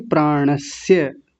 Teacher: तालव्य शकार नहीं, दंत्य सकार